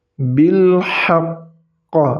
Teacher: Ketika qaf sukunnya ditahan 2 harokat bil haqq, kemudian dipantulkan. Jadi huruf qalqalahnya itu tidak hilang ketika berada di akhir kalimat. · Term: huruf qalqalah qaf